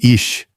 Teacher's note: feito muito mais à frente, com a língua arqueada em direção ao céu da boca, um som leve, sibilante, bem mais próximo de um chachon de chuva soprado do que de qualquer pigarro.